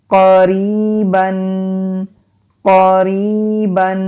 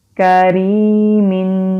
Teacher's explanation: نقطے والی جو قاف ہوتی ہیں وہ حلق سے نکالتے ہیں اور پر یعنی کہ موٹا پڑھتے ہیں اور کاف باریک پڑھی جاتی ہے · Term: قاف اور کاف میں فرق